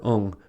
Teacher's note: for ung, the air is directed to the nose.